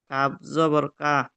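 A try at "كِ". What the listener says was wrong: কাপ জাবার নয়, একটু দেখে পড়েন জি।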